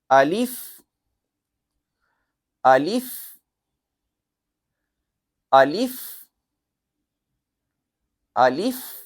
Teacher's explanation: اگر آپ کو میں سادہ سا اس کا مخرج بتاؤں زبانی، تو الف کا مخرج ہوتا ہے یعنی کہ منہ کا کھلا ہوا حصہ، یعنی کہ اس میں کوئی بھی زبان کہیں بھی لگے گی نہیں، بس صرف جسے جوف دہن یعنی منہ کا کھلا کہتے ہیں، منہ کا خالی حصہ، وہاں سے الف نکلتا ہے